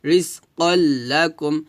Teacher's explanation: যদি তানভিনের পর লাম আসে তাহলে মিলাইয়া গুন্না ছাড়া পড়তে হয় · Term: ইদগামে বেলা গুণ